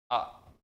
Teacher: सबसे ज़्यादा जो मुख ओपन होता है वो होता है आ के दरमियान, आ। तो आपने देखा कि इसमें सबसे कम, अब इसकी तुलना में ज़्यादा ए ओ में, इसकी तुलना में ज़्यादा ए औ अ में, और इसकी ज़्यादा तुलना में तो आ।